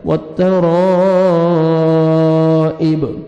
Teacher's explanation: stop کریں گے, با ساکن ہو جائے گا والترائب